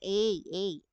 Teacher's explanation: A, nasa gitna yan at nasa harapan. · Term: A naman na malambot